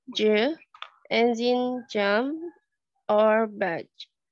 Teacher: Another voiced post-alveolar is /dʒ/ as in “jam” or “badge“